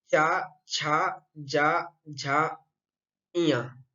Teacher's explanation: इन 5 वर्णों का उच्चारण हम तालु के द्वारा करते हैं, इसीलिए इसका उच्चारण स्थान तालु को माना गया है। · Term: चवर्ग